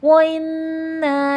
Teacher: اِنَّا میں نون مشدد غنہ ہوگا